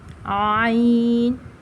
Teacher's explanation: یہ حلق کے درمیان والے حصے سے ادا ہوتے ہیں